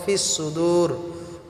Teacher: ওয়া হুসিলা, মা, মাটাকে আমরা এক আলিফ টেনে পড়ব। ফিস সুদূর, আর সোয়াদগুলিকে আমরা মোটা করে উচ্চারণ করব